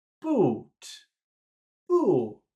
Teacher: it's the end of a phrase, so we'll have to start high, boo, but then finish low.